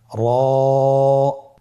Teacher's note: র আবার বলুন র এর মাখরাজ কোন জায়গা থেকে স্ক্রিনে দেখুন জিহ্বার আগার উল্টা পিঠ তার বরাবর উপরে তালের সঙ্গে লাগিয়ে উচ্চারিত হয় · মোটা করে উচ্চারণ করব। এবং র হরফটি এক আলিফ টেনে পড়ব।